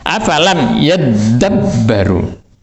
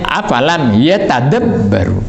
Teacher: Karena demikian kemudian dimasukkan suaranya ta itu ke dalam suaranya dal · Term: idgham